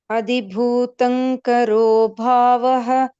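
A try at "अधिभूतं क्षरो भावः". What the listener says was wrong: It is not karo bhava, kshara. Kshara means, I heard it as karo.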